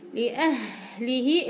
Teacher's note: إلها فيها زمن الرخاوي مع النفس القوي